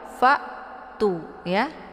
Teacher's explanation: hamzah ini posisinya di tenggorokan bagian bawah. Fa'tu ya. Kemudian tu dibaca panjang karena di sini ada waw sukun sebelumnya berharakat dhammah.